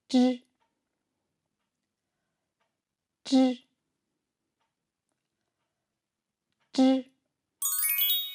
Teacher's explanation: On fait descendre légèrement la pointe de la langue et on fait s'échapper l'air dans la suite. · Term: son zhi